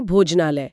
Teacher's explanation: जब समान स्वर आपस में टकराते हैं तो वे हमेशा अपना बड़ा रूप ले लेते हैं। जैसे भोजन और आलय टकराए तो अ और आ मिलकर आ बने, यानी भोजनालय। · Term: दीर्घ संधि